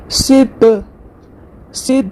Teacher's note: सीन यहां पर देखिए सीटी वाला हर्फ है। सीटी के साथ अदा होगा।